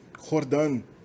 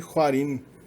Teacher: É interessante ver que no kurdo esse W ainda é pronunciado.